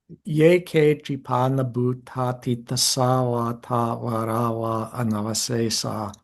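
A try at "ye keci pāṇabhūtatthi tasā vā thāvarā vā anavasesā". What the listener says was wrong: Okay, the tsa. That was actually pronounced slightly shorter, almost compressed into nothing.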